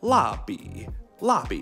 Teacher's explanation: That's quick, sharp, abrupt, and falling. And the B is a third tone. A super low and super bass.